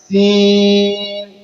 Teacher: سیٹی کی آواز نکالتے ہوئے اس کو پڑھنا ہے